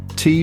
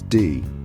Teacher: both are made by stopping air flow at the front of the mouth the difference vocal chord vibration D is voiced T is voiceless